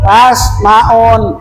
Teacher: Jadi ada mim mati ke depan ada huruf pa, namanya idhar sapawi. Bacaannya putuskan